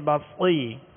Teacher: اور اس میں سیٹی کی آواز ہوگی، لہذا ہونٹوں کو گول نہیں کریں گے